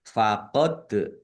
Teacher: Lam fathah berdiri mad thobi'i panjang dua harakat. Faqod dal sukun bacaan qalqalah dibaca memantul ditampakkan pantulannya.